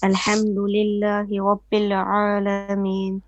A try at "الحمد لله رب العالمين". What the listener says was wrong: You stretch. You stretched the lam. You said alamin. It's alamin.